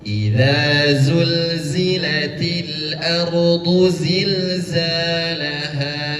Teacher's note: yang pertama za digigit, kemudian setelahnya zul bergetar.